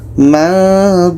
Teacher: Ketika kita baca nun, kita sudah merasakan huruf dha. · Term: ikhfa hakiki